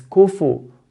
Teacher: It's very common to hear kufwan ahad, kufwan, by making the fa sukun. To make the fa sukun is incorrect.